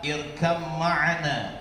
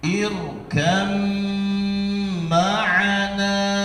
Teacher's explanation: Ba-nya masuk ke dalam mim. Jadi yang lebih dominan dibaca adalah mimnya. Irkam ma'ana. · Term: idgham mutajanisin